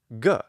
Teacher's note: the voiced velar occlusive ga sound which is a native sound in latin